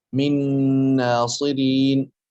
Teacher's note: والنون من ناصرين إدغام متماثلين صغير كامل وفيه غنة أيضا